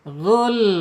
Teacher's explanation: Kemudian sifat yang lainnya inkhirab. Inkhirab itu dicondongkan lidah kita ketika lam ini diucapkan. Ghul, larikan lidahnya kiri atau kanan supaya tidak ada pantulan.